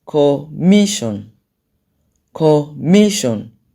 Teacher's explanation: the stress is on the me that's where you have the loudest sound